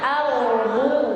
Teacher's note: Ya, roknya jangan qalqalah ya, ardu. Coba semuanya ardu. Jangan dipantulkan.